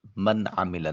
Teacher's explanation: عین کو وسط حلق سے ادا کریں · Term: حرف حلقی